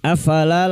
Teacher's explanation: lam alif 2 harakat kita panjangkan mat tabi'i